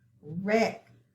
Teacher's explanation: I'm going to underline digraph WR, but we don't hear the W, we just hear the R.